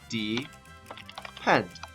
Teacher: i hear that d sound is making a long e so it's making an open syllable pattern of d e that's my pattern right there the d e